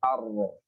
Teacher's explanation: Kalau ra ada celah di atasnya, ar. Ya, lidahnya ya dekung, ya. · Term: inhiraf